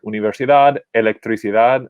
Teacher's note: you'll hear that the stress continues to fall on that last syllable